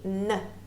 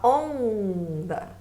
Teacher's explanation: Aqui no onda, você não ouve o som do N, você ouve a extensão do O. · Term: dígrafo vocálico